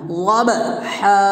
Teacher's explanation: با میں قلقلہ بھی کرنا ہے، اور یہاں بڑا ہا ہے اس کو ادا بھی کرنا ہے